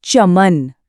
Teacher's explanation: जब हम च बोलते हैं तो हमारी जीभ का जो फ्लैट बीच वाला हिस्सा है वो ऊपर तालू को छूता है। बोल कर देखो सब चमन महसूस करो जीभ एकदम सीधी-सीधी ऊपर जाकर चिपक रही है। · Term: तालव्य